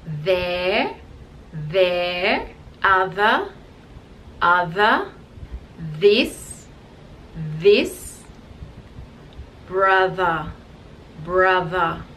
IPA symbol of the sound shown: ð